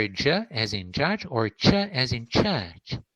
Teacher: i really do press a part of my tongue let's say maybe the front to middle part of my tongue against the alveolar region